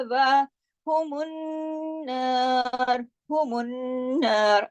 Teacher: खड़ी जबर है, एक अलिफ जितना एक अलिफ पढ़ा जाएगा इतना वा पढ़ा जाएगा